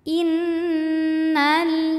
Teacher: Nun ketika bertasdid maka ada bunyi dengungannya bunyi n yang kita tahan